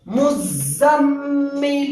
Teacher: اب یہاں پر غنہ بھی ہوگا اس لیے کہ میم پر تشدید ہے